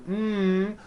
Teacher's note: the M sound comes out of your nose it's a nasal sound